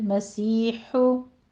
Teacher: मसी में या मदा है, हु बारीक अदा करेंगे